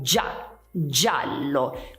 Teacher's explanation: non si sente la I perché la I non è tonica, cioè l'accento in questo caso non va sulla I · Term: pronuncia dolce